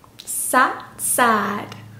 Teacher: 유성음으로 끝나는 sad가 조금 더 길게 늘어지죠 · 모음 소리가 달라집니다. 아 발음이에요. 에가 아니라 아. sad, sad. 이렇게요.